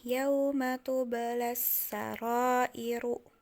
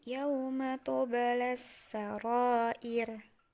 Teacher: Jadi bukan dibaca iru lagi tapi jadi ir.